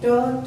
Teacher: जब इनका उच्चारण करेंगे तो हमारी जीवा दंतमूल, दांतों की जड़ों को स्पर्श करेगी या मसूड़ों को स्पर्श करेगी, लेकिन दांतों को स्पर्श नहीं करेगी, जिसे हम मूर्धा या दंतमूल कहते हैं।